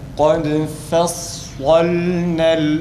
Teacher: sad fa'nın tam zıdına kalın ve aynı zamanda ah sesi çıkararak okuyoruz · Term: kalın harf olan sad